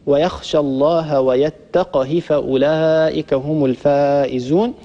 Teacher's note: حفص رحمه الله يسكن القاف ويكسر الهاء